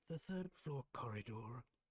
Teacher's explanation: He's got a soft distinct Irish accent. That's why he does pronounce the R at the end